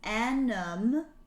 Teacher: so you have that n sound going into the vowel sound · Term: liaison